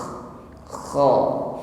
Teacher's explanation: ada gesekan pada akar lidah pada dinding tenggorokan sehingga ada suara dengkur kha.